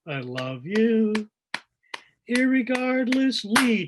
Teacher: Irregard, and so you've got guard, the primary stress syllable, on the third beat of the bar